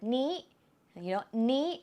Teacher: Normally, you can compound a noun together with the word นี้ นี้ as a high tone.